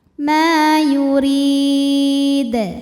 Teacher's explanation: Maka huruf mim panjang dua harakat. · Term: mad thobi'i zohiri